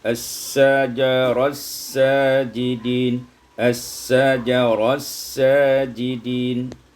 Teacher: idgham ta fi sin, diidghamkan ta pada sin